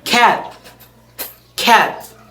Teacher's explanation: unreleased T, as in American English, cat